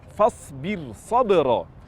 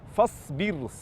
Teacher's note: Jadi fasbirro bukan tafim namun di baca tarqik karena rnya terpisah dengan huruf istilla yang terletak di setelahnya